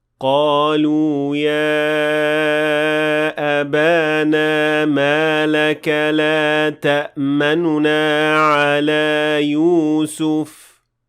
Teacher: I did not fully pronounce the dhamma on the noon, so I did not say لا تأمننا. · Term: ar-rawm